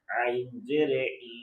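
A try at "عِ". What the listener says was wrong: আইন এটা হামজা জের আর আইন জের হয়ে যাবে দেখেন তাই না এটা হামজা জবর আ আর আইন জবর আ তাহলে আ আ তাই না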